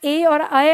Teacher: कंठ तालव्य कंठ और तालु की मदद से उच्चारित होने वाले वर्ण